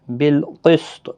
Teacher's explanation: قاف حروف مستعلیہ میں سے ہے، پر پڑھا جائے گا۔